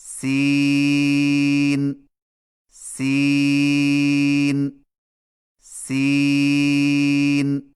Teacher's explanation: سین کی ادائیگی میں زبان کی نوک کو ثنایا سفلی کے کناروں سے مضبوطی سے لگا کر باریک اور سیٹی جیسی آواز میں پڑھیں، یعنی سین سین سین۔